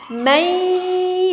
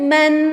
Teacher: kita angkat lidah dengan angkatan satu, bukan man tetapi mai, satu angkatan lidah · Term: idgham